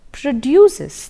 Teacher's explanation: produces there is a verb and therefore the stress on the final syllable